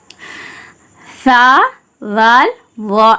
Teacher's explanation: சா வால் வா இந்த மூணுக்குமே வந்து நாக்கு வெளிய வரணும்